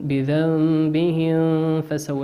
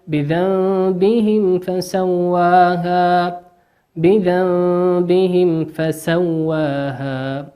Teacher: ما ندغم الميم في الفاء